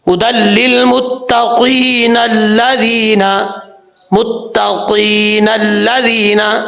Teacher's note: وقف نہیں کرتے تو پھر نون کو لام کے ساتھ ملائیں گے، الف جو ہے بیچ میں گر جائے گا، پھر الف کو پڑھنے کی ضرورت نہیں ہوگی۔